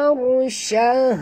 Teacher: Ra itu mati, huruf sebelumnya baris atas kena baca tebal. Ar naik ke lidah ke atas.